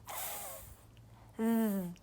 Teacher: you make the sound with your tongue sticking out